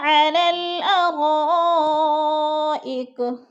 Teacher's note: را پہ جو ہے مد متصل ہے، چار الفی مد ہے